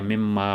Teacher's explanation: مما یہ بھی 2 کلمات ہیں، من اور ما، اس کی نون کو میم میں مدغم کر دیا، مما بن گیا